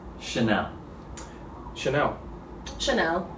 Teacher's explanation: in my london accent kind of omit the l sound